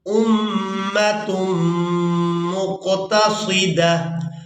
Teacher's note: وقف کی صورت میں اس ایک آنکھ والی تا کو ہا میں بدلیں گے اور ساکن ادا کریں گے ، دال کو اس ہا ساکن کے ساتھ ملائیں گے، أُمَّةٌ